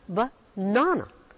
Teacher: It's not banana, it's banana. The stress is on na, banana.